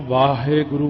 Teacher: ਜਿਵੇਂ ਆਪਾਂ ਵਾਹਿਗੁਰੂ ਕਹਿੰਦੇ ਆ ਨਾ, ਉੱਥੇ ਵੀ ਇਹੀ ਦੱਸਿਆ ਸੀ ਨਾ, ਵਾਵੇ ਦਾ ਕੰਨਾ ਜਿੰਨਾ ਮਰਜ਼ੀ ਲਮਕਾ ਕੇ ਬੋਲ ਦਿਓ। ਵੀ ਹਾਹੇ ਦੀ ਸਿਹਾਰੀ ਛੇਤੀ ਹੋਈ ਚੁੱਕੀ ਜਾਣੀ ਆਪਣੇ ਆਪ ਹੀ।